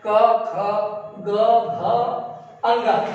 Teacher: कंठ सबसे नीचे गले में जो उठा हुआ स्थान होता है वहीं से उच्चारित होता है